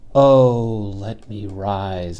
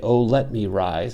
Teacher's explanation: I'm convinced that is trochaic inversion